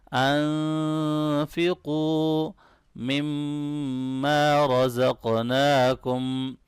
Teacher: نون ساکن پہ اخفا ہوگا، قاف کو موٹا پڑھنا ہے